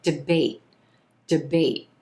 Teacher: i'm holding the t at the end of this word the air is coming up into my throat stopping here in